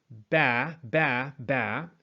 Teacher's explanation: you have that closure of the lips for the B sound and then you hop right into that vowel